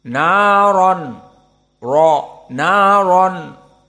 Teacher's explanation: RO di sini dalam keadaan mufakhamah karena dia faththah naron Ro naron bukan Ra